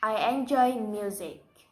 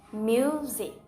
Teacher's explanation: I'm going up in pitch on mu and then down in pitch on sick. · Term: falling intonation